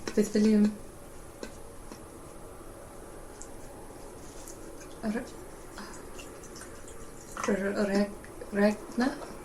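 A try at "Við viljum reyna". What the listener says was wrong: With William Reina. With William Regna means we want to rain, as in to precipitate from the sky. But with William Reina.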